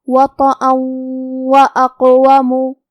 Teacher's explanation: واو حروف الادغام بغنہ میں سے ہے اور ادغام کا معنی ہے حرف کو حرف میں داخل کرنا، تو ہم یہ تنوین کو واو میں ملا کے غنہ اور تشدید کے ساتھ یہ حکم کو ادا کریں گے